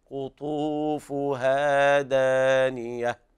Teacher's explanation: مراعاة المد الطبيعي في الواو والألف